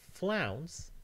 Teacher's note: in 'flounce' it's the diphthong [aʊ] which again in English we assume to be a single unit